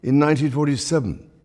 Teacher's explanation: Occasionally the King uses American-style T voicing, as here in the word 40.